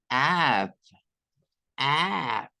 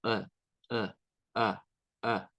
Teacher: Digamos como el sonido de una a en español pero no tan bajo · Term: una a intermedia